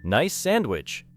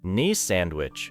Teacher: The final S sound in nice and the beginning of sandwich connect closely.